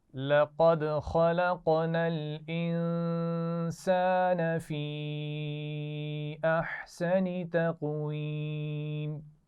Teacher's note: قاف پر قلقلہ ہوگا · خلقنا الانسان، قاف پر قلقلہ ہو رہا ہے، خا اور قاف دونوں موٹے پڑے جاتے ہیں · اور تقویمن تھا تو یہ ہم وقف کے اصولوں میں پہلے پڑھ چکے ہیں کہ دو زیر کو ہم کیا کرتے ہیں؟ ساکن کر دیتے ہیں، جیسے ہم نے یہاں پر کیا.